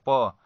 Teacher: देखिए दोनों ओठों को स्पर्श करते हुए वायु निकल रहा है। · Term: ओष्ठ